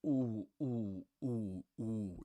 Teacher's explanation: And of course, that ooh needs to be pronounced, as a back vowel, like ooh.